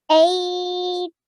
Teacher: this ya sakin or this waw sakin is a lean letter. So that's why you have to prolong it softly.